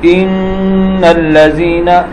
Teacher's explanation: یہاں نون کی آواز کو میں نے ناک کے اندر لمبا کیا ہے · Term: غنہ